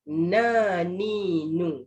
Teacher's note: Dia kena ban macam tu kan. Itulah mahraj huruf nun, hujung lidah dengan langit-langit atas di belakang gusi.